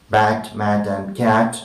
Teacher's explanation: The next is as in bat, mat and cat, and we will say it is front, between, open and half open, and of course unrounded and short